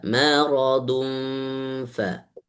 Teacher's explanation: Maradum itu tanwin bertemu dengan fa. Masukkan ke dalam huruf fa.